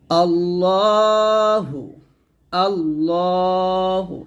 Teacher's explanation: এখানে আল্লাহ বলা যাবে না, ল বলতে হবে, মোটা করতে হবে।